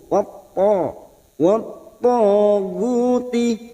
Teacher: Masuk pada huruf to adalah huruf isti'la, huruf tebal, maka kita tebalkan